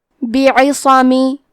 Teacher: کلمت بعصمی میں با اور عین کے نیچے زیر ہے، صاد پہ زبر ہے تو ہم یہ تینوں حرکات کو ظاہر کریں گے اور حرف الصاد حروف التفخیم میں سے ہے لہذا ہم یہ حرف کو بھاری آواز میں پڑھیں گے